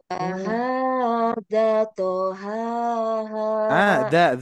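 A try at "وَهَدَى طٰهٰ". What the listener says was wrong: Bu, kelewat, panjang.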